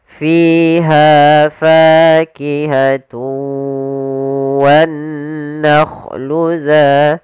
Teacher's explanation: Pada bacaan fiha, maka di sini kedua-duanya ada mad tabi'i. Yang pertama pada lafal fi, yaitu adanya kasrah bertemu dengan ya, kita panjangkan dua harakat fi-nya. Kemudian pada lafal ha ada fathah bertemu alif, maka juga mad tabi'i, panjangnya dua harakat.